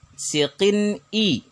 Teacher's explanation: Tanwin bertemu dengan hamzah, tanwinnya dibaca jelas, hamzahnya dibaca jelas. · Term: izhar halqi